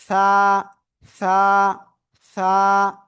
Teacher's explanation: জিহ্বার আগা সামনের উপরের দুই দাঁতের আগায় লাগাবো, লাগিয়ে নরম করে আমরা এক আলিফটা নিয়ে উচ্চারণ করব। হালকা বাতাস কিন্তু বের হতে হবে।